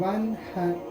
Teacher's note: نون ساکن کو ہم ظاہر کر کے پڑھیں گے، اس کی آواز ہم ناک میں لے کر نہیں جائیں گے، بغیر گناہ کے ظاہر کر کے پڑھیں گے۔